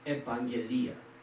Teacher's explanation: is pronounced evangelia, with the stress on the penultimate syllable